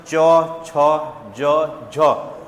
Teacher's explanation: जिस हिस्से में जीभ लग रही है देखो च छ ज झ उसे हम क्या कहते हैं तालू बोलते हैं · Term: तालव्य